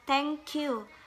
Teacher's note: The syllable is weak when it has the close back rounded vowel U. For the example like thank you, the second syllable is weak.